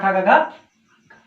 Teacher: का वर्ग को कंठ ध्वनियां कहते हैं